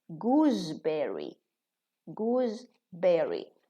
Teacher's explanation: We make both the same. So what we do, we voice the S. We pronounce it za